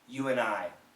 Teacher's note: the N is a strong sound with D as a weak sound the N will kill the D